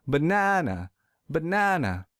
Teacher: I will stress the second syllable real hard